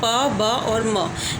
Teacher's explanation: तो जब sounds produce किए जाते हैं कॉन्सोनेंट्स में प ब और म, ये जो प्रोड्यूस किए जाते हैं इसमें हम क्या करते हैं, दोनों लिप्स को एक साथ लाते हैं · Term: बाइलेबल